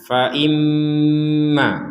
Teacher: Nah, di sini ada nun bertasydid. Kedudukannya sama dengan mim bertasydid. Sama-sama didengungkan atau sama-sama dibaca dengan dengungan.